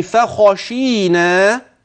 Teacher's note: وتخلي بالك بقى من الخاء المفخمة